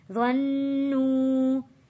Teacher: وَأَنَّهُمْ ظَنُّوا غا کو موٹا پڑھیں گے اور غا کو تشدید والے نون کے ساتھ جوڑ کر پڑھنا ہے اور نون پر غنہ ادا کرنا ہے۔ ظَنُّوا واو ساکن سے پہلے پیش ہے، حروف مدہ ہے، تو یہاں اس لیے ہم نے نو ایک الف کے برابر کھینچ کر پڑھا ہے۔